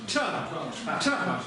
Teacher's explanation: Ча, с придыханием. Язычок уперся в твердое небо.